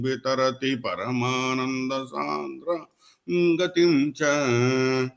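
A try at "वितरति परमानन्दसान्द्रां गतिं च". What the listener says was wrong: After vitarati, there is a pause.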